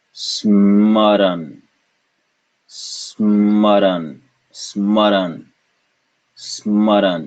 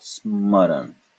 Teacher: And so we introduce the conjunct, the Sanyukt Akshar, and that's its purpose, to get rid of the vowels in between consonants so that we can have conjuncts, yes. Two consonants pronounced without a vowel in between.